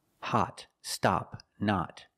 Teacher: we know it's the short o to sound ah like hot stop and not